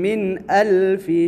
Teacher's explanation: من الف یہاں پر اظہار حلقی ہوگا، نون ساکنہ کے بعد حروف حلقی یعنی حروف اظہار میں سے حمزہ آیا ہے